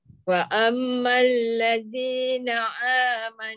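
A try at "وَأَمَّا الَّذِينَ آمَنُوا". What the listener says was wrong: Tak boleh. Dia jadi a. A a a.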